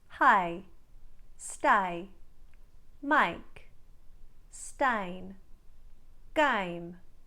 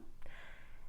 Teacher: what the australians do is they close in the corners of the mouth and they drop the jaw slightly almost starting it with ah as an ask so from a